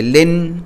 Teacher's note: اینڈ میں ہماری زبان اوپر تالو کو لگتی ہے